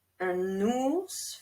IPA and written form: œ̃(n)urs (un ours)